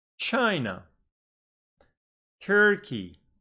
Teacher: It's got 2 syllables, but the stress is on the first syllable because the first one is bigger.